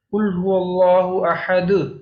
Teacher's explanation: جب ہم اس کو پڑھتے ہیں تو ہم ایک طرح سے اینڈ پہ نا آواز نکالتے ہیں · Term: قلقلہ